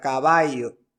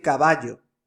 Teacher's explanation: el yeísmo consiste en pronunciar la doble l como y